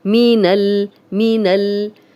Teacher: اب نون کی زبر لام سے ملے گی، یہ الف پڑھنے میں نہیں آئے گا